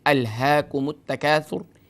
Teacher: جب ہم اس کو آیت نمبر 1 پر اسٹاپ کریں گے تو اس صورت میں ہم آخری حرف را کو ساکن کر دیں گے، کیونکہ را موقوف علیہ ہے۔